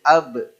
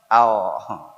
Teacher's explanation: kalau disukun dia jadi AB ini melibatkan dua bibir